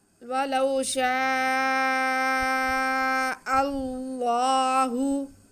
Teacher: یہاں پہ ہمارے پاس زبر ہے، تو ہم اس میں جلالت اللہ کو پر کر کے، موٹا کر کے، منہ بھر کے پڑھیں گے · وَلَوْ شَاءَ، جی آگے اب حمزہ کے بعد اس میں جلالت اللہ آ رہا ہے، تو ہم حمزہ کو اللہ لفظ کے ساتھ ملا کے پڑھیں گے، تو اس میں جلالت اللہ سے پہلے زبر ہو یا پیش ہو تو پر پڑھا جاتا ہے۔